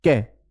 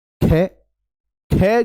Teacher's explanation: तो क हुआ अल्प प्राण क ख यह ख हुआ महाप्राण क्योंकि इसमें अधिक वायु है अब इन सभी को बोलकर देखो आप तो आप पाएंगे कि